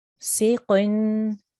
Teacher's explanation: So make your mouth round, غاسق, and your qaf here again is thick qaf. Okay, so even though it's got kasra underneath, you still need to try and make a round mouth and a thick sound when you're saying it.